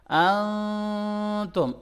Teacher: آواز ناک کے اندر تھوڑی دیر کے لیے چھپ رہی ہے، اس کو کہتے ہیں اخفا